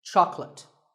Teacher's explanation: make sure that there are only 2 syllables. Choc and let. Chocolate. And remember, there's no late in chocolate.